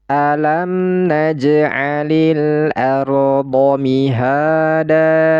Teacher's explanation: Fathah tanwinnya ini baris atasnya ini ya digugurkan satu sehingga dia berharokat fathah dan dibaca panjang 2 harokat. Mad iwad ini dibaca panjang 2 harokat.